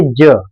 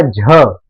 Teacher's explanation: ज में कम है। जब कहना होगा झ, तो आपको लगेगा कि हवा ज्यादा निकल रही है, ऐसे करके। तो इसको कहते हैं अल्प प्राण।